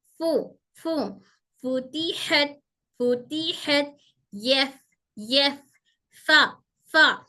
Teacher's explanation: दोनों दांत हमारे नीचे के होंठ की तरी को टच हो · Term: फा का मखरज